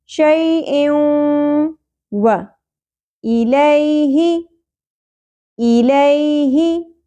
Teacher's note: یہاں دیکھیے یا حرف لین ہے نرمی سے ادا ہوگا. شیء دو زیر تنوین کے بعد یمنو میں سے واو آ گیا تو ہم نے کیا کرنا ہے؟ ادغام مع الغنہ